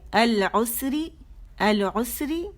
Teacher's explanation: را بھی باریک پڑھی جائے گی کیونکہ اس کے نیچے زیر ہے